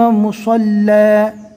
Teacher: رکنے کی حالت میں دو زبر الف مدہ بن جائے گا